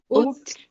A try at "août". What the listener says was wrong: A gente não vai ler o A, a gente vai ler a partir daqui, ó. Août.